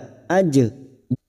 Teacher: jim sukun qalqalah sugroh yang mati asli di tengah kalimat, jangan lupa dipantulkan.